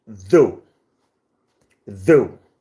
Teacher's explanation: you only have voice dental fricative, the, and ew, the diphthong, ew, diphthong, and that's all.